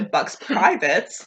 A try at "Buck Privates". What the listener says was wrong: Buck Privates. Not Buck's Privates.